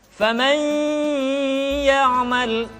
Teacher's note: Karena gunnah, tempat keluarnya adalah al-khayshum atau rongga hidung.